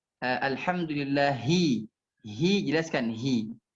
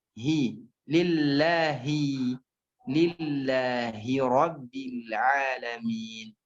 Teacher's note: Oh, ha ini sifatnya lemah. Oleh itu jangan sampai dilemahkan, jelaskan dia huruf ha.